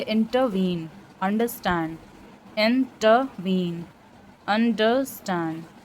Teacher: दो unstressed syllables और उसके बाद एक स्ट्रेस्ड सिलेबल होता है इसमें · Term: एनापेस्ट